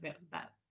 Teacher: como en español que sabemos que se fricativiza es verdad, ¿verdad? Que no se hace completamente la oclusión.